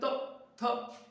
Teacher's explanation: हमारा जीव दांत को छूती है